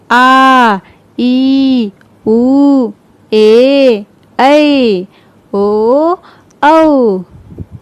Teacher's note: बोलते समय इसमें लंबा मतलब कि ह्रस्व के अपेक्षा इसमें दुगुना समय लग रहा है, ज़्यादा अधिक समय लग रहा है।